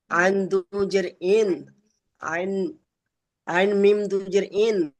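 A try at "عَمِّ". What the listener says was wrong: হয়নি, প্রথমে আইন অক্ষরটা পড়বেন, তারপর মিম অক্ষরটা পড়বেন, তারপরে সবার শেষে দু পেশটাই পড়বেন। উমটা গুণনা হবে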